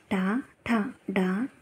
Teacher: నాలుకతో అంగిల్ని గట్టిగా తాగుతూ పలుకుతాం కాబట్టి వాటిని మూతన్యాలు అంటాం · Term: మూర్ధన్యాలు